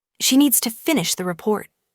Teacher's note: Stress needs and report, and let the small words fall quietly.